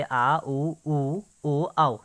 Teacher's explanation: इसके बाद बात कर लेते हैं पश्च स्वर की। जिन स्वरों के उच्चारण में जीभ का पश्च भाग काम करता है